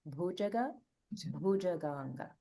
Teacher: you can just give a little more emphasis to the Mahaprana here in bhujaga, bhujaganga